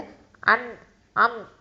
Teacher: நீங்க மூக்கை பொத்திட்டு அன் அம் அப்படின்னு சொல்லுங்க சவுண்டே வெளியில வராது நான் இப்ப மூக்கை பொத்திட்டு தான் உங்ககிட்ட சொன்னேன் சவுண்டே வராது ஓகேவா நூன்